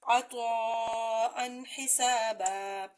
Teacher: اس کے بعد حروف حلقی میں سے ہا ہے، عطاءً حسابا۔ اس نون تنوین کو ظاہر کر کے پڑھیں، یہاں پہ غنہ نہیں ہوگا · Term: اظہار حلقی